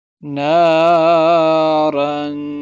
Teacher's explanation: نارن، را الف دو زبر رانے، تو یہاں پہ را کو موٹا بھی پڑھیں گے اور یہاں پر غنہ ہوگا